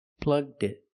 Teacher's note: It's easier to link the D sound to the next word, it. Together, plugged it.